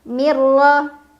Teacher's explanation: n ada unah karena adaun sukun yang bertemu dengan huruf ra dibaca Nun sukunnya masuk ke ro tanpa dengung Jadi cukup ditekan · Dibaca nun sukunnya masuk ke ra tanpa dengung, jadi cukup ditekan. Mirra, ra dibaca secara tafkhim karena ra berbaris fathah, jadi bacanya tebal. Tebal itu pangkal lidah kita naik.